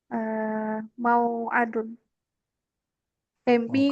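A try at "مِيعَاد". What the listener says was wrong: bukan. Miu. Adun. Mimnya kasrah semua, Om. Isim alat berawalan mim kan? Semuanya kecuali yang terakhir di kasrah mimnya. Miftah, mizan, minsyar, ya kan?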